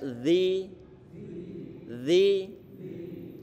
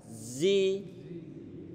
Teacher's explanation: Alladzina itu huruf zalnya, jangan sampai lupa zal ini makhrajnya ujung lidah ditempelkan ujung gigi seri bagian atas dan keluarkan sedikit. Tempel dulu alladzina.